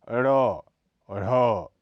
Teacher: इसके उच्चारण के समय जीभ ऊपर की ओर उठकर झटके से नीचे आती है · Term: उत्क्षिप्त